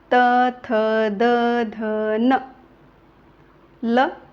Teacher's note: जिभेचा दाताला स्पर्श होत आहे म्हणून या वर्णांना काय नाव दिला आहे दंत वर्ण किंवा दंत्य